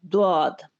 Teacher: اس کے لیے زیادہ تر جو دلائل ہیں وہ یہ کہ ضاد ہے، یعنی یہ مخرج دال کی طرح نہیں پڑھا جائے گا بلکہ اس کے ضاد پڑھا جائے گا، ضاد۔ اب ضاد پڑھتے ہوئے زبان کی کروٹ جو ہے، یعنی دائیں یا بائیں طرف سے زبان کی کروٹ جو ہے وہ اس میں معاون ہوگی